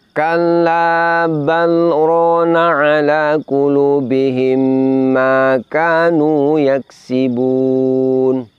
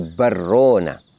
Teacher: Ulama tajwid menjelaskan kenapa di sini lafaz balrona lam sukunnya tidak boleh diidghamkan ke huruf ro, tetap dibaca idhar, tetap dibaca jelas · Apabila lam sukunnya diidghamkan ke ro, maka akan terdengar menjadi satu lafaz, yaitu bunyinya menjadi barrona.